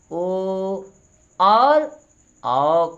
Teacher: ओ और औ का उच्चारण स्थान कंठ एवं ओष्ठ दोनों है। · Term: कंठोष्ठ वर्ण